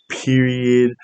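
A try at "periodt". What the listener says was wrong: You said it wrong. It was period. There's a T at the end.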